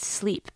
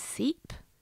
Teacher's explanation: simplifying consonant clusters so that the word sleep becomes seep